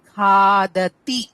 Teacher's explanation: తి కి మహాప్రాణం రాకూడదు